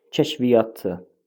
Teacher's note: Kəşf kəşf sözün kökü varsa, demişdik ki, iki y-dan biri düşəcək tələffüzdə kəşfiyyatçı biri düşəcək. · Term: Səs düşümü